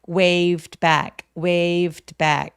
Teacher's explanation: 자음 앞에서의 V는 아주 가볍게 살짝 f처럼 발음해 보세요.